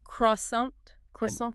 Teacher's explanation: The shape of your mouth must change for that word. The r sound is deep in the throat.